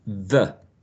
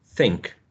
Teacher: the tip of the tongue is in between the teeth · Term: interdental